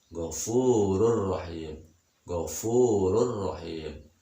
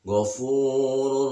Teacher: ketika tanwin atau nun mati bertemu dengan huruf idgham bila gunnah, dilangsungkan saja, tidak boleh didengungkan atau tidak boleh ditahan